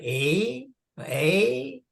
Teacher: it's a long e and it's a sound that we do have in English but to our ears it often sounds more like an A but it's that elongated e so e e kind of sounds